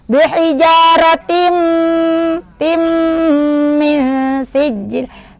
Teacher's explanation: kasratain bertemu mim, idgham bigun. Nah, dimasukkan sambil didengung.